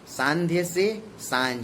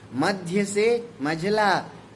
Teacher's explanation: तत्सम शब्द की ध्य ध्वनि आधा ध य तद्भव में झ में बदल जाती है।